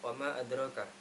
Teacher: e mim mim yang berharat fathah setelah fathah ada Alif panjang dibaca panjang selama dua setengah Alif yaitu tiga harakat karena terdapat Mad thaabii yang setelahnya terdapat Hamzah kemudian wama adraka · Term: Jaiz munfasil